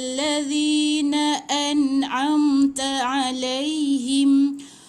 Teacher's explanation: An'am, satu hamzah, lepas tu ain lagi sekali.